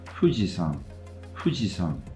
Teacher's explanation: that is a good example of the bilabial fricative